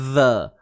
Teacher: Huruf zal kena keluarkan sedikit sahaja hujung lidah kita.